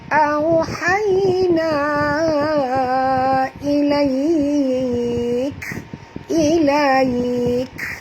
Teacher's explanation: bila kita berhenti, kita kena bunyikan hamas pada huruf kaf yang kita matikan. Sebab huruf kaf ni asalnya ada baris.